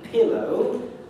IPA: ˈpɪləʊ